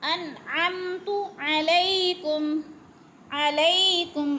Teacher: انعمت علیکم، علی پہ یا لین، یا ساکن سے پہلے لام کے اوپر زبر ہے تو یا لین کھینچ کر نہیں پڑھنا، جلدی جلدی ادا کرنا ہے